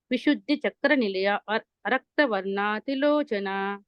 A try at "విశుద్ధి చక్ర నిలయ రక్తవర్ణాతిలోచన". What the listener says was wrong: ఇక్కడ అనకూడదని చెప్పాను, అది ఆ నిలయాలోనే ఆ రెండు ఆలు కూడా ఉన్నాయి, కాబట్టి ఇది ఒకే ఊపిరిలో అనాలి.